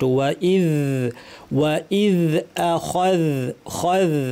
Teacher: ওয়া ইদ আখায, খায, এখানে আ শক্ত, খ ভারী, জাল স্পষ্ট করে আমাদেরকে উপরের দাঁতের শীর্ষে জিহ্বা লাগিয়ে এই আওয়াজটা কিন্তু করতে হবে। এটা জালের আওয়াজ, এটা থাকতে হবে।